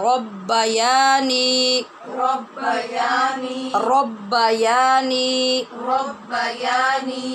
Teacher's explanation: یا اور نی دونوں کو حرف مدہ کی وجہ سے برابر لمبا کرنا ہے۔